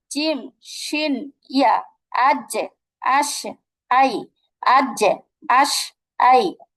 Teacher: জিহ্বার ঠিক মাঝখানটা আমরা তার বরাবর উপরের তালুর সঙ্গে লাগিয়ে উচ্চারণ করব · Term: 6 নম্বর মাখরাজ